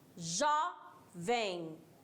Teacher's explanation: O jó, primeira sílaba é tônica e o vem é átona. Tônica porque ela é pronunciada com maior intensidade e vem é menos intensidade.